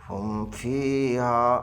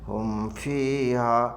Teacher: آواز، اور یہاں پر کیا ہوگا، یہاں اظہار ہوگا، ہم فیہا، بالکل میم کو نہ زیادہ دیر کرنا ہے، نہ اخفا کرنا ہے، نہ گنہ کرنا ہے، سیدھے طور پر اس کو ملا کر کے پڑھیں گے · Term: اظہار شفوی